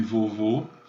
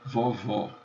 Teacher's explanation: O O longo pronuncia-se O, como em vovô, e o O breve pronuncia-se aberto, como em vovó.